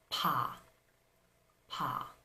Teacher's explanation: the Korean pas is not voiced so when you say ha in Korean you are going to feel the delay in the vibration of your vocal cords